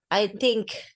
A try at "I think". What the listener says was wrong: Soalnya tadi tuh think-nya pakai G gitu ya.